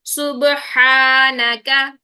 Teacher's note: यहाँ पर हा बारीक हर्फ है तो अलिफ भी बारीक रहेगा